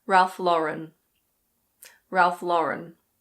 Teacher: Some people say Ralph LaurEN, but apparently it's supposed to be Ralph LAURen.